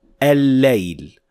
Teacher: Remember, this is al-shamsiyya, so we will not pronounce the first lam at all, and the second lam will have shadda on top of it